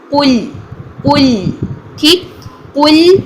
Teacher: लाम भी बारीक रखें, कॉफ को मोटा करना है लेकिन लाम को कुल नहीं करना।